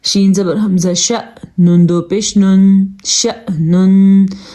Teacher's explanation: شین زبر حمزہ شا نہیں کرنا کیونکہ ساکن ہے تو یہاں پہ جھٹکا پیدا ہوگا